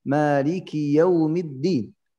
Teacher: Ad-din ini harus din harus jelas harfud dal bukan ti. Karena kalau ti ini ganti makna.